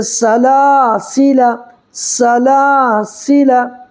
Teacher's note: الف جس سے پہلے زبر ہو تو الف مدہ ہوگا، اس کو ایک الف برابر کھینچ کر کے پڑھیں گے